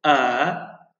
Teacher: Elif kendinden önceki fethâl bir harfi bir elif miktarı uzatıyor idi yani Bir vuruşluk nota miktarı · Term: uzun ünlüler, uzatma harfi